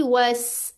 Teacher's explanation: वस, क्या साउंड आएगी, वस। सीन में क्या है, सफीर है, सीटी है।